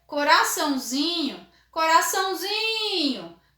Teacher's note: eu já não fico mais com a minha sílaba tônica aqui no ão. Eu vou ter no zin. Então, lembrando, o tio não marca a minha tonicidade, tá?